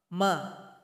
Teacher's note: huruf mim keluar dari bibir atas dengan bibir bawah yang saling berjumpa